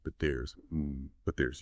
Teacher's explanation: remember that T sound at the end of but just like with don't and what it's often stopped or dropped. You don't fully release it again.